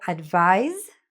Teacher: So advise, which is spelled with an S, but sounds like a Z